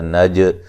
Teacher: جیم کو ہلا کے پڑھیں گے، قلقلہ ہے